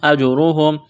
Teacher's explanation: را کے اوپر پیش ہے تو را کو موٹا کرنا ہے